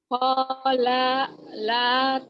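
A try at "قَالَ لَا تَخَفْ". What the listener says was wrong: La pertama pendek. La kedua baru panjang. Kolala takhofa gitu.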